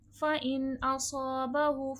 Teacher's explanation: صاد حرف مستعلیہ بھی ہے اور حرف صفیر بھی ہے، موٹا بھی کیا جائے گا اور سیٹھی کی بھی آواز آئے گی۔